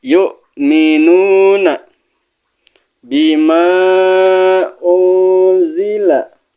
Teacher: nun mati ketemu zai, dibaca ikhfa